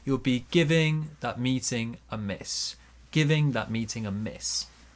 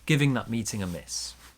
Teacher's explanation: Bigger stress on miss.